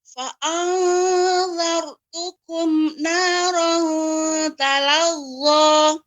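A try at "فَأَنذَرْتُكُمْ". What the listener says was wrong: Ya, kemudian fa'anzartukum, nun sukun bertemu dengan za ikhfa. Namun huruf zal adalah huruf yang tipis, bukan huruf isti'la, istifal, maka ya kita ikhfa-nya tipis. Fa'anzartukum. Ya, masih untuk kumnya ada berhenti ya, ada ini Ibu. Jadi jangan sampai berhenti. Namun dia kalaupun ada jeda yang tidak sampai berjeda seperti saktah.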